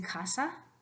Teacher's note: It's the symbol that goes K. The casa, vocal cords don't vibrate. So sonido sordo.